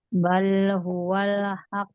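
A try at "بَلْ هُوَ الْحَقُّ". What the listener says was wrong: Bal, lamnya jangan ditarik nih. Bal tidak. Bal jangan tebal. Bal.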